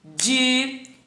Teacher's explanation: Então, é fi. A sílaba tônica é a penúltima.